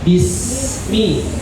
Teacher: Nama sifatnya ar-rohwa, melepaskan suara dengan lepas.